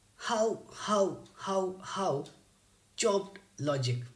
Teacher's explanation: all six words here are stressed and it is an example of spondee